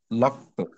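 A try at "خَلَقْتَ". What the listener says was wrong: আচ্ছা, লাম জবর কি হয়, ল হয় নাকি লা হয়? লক বললে তো লামের উচ্চারণ নড়ে গেল, লাক। জোরালো রাখতে হবে। লাক, খলাক তু, খলাক তু, এভাবে।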